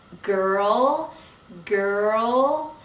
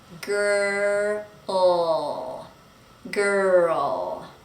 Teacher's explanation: you want to sort of blend the R into the L. So the R, the tongue is going to come and curl.